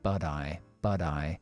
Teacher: con el but, con I, empleamos aquí el flap T